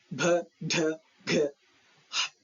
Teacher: general consonants are pronounced with a noticeable puff of air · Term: యాస్పిరేటెడ్ సౌండ్